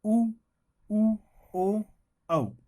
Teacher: होठों से बोलने वाले स्वर, इनका उच्चारण स्थान ओष्ठ होता है,